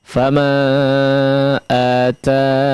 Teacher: nunnya sukun, ya-nya hilang ya